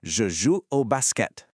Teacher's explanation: pay attention to how crisp that T is at the very end